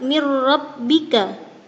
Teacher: Berikutnya pada lafaz mir rabbika terdapat bacaan idgham bila gunnah sebab ada huruf nun sukun bertemu dengan huruf ra